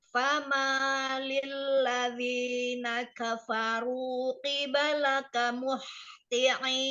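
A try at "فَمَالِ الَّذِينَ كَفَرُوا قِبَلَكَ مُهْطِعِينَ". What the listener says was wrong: Huruf H-nya masih agak tercampur dengan H kecil, ya. muh, ke bawahin lagi. besar, H besar. Muhti'in, Ain, al-jauh, jangan masuk ke hidung. jangan ain, jangan alirkan ke hidung. Al-jawf, muhti'in.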